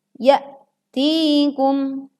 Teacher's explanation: ada hamzah sukun, maka suara dan angin terhenti. Tidak boleh mengambang.